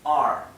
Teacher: es entre medio de una o y una a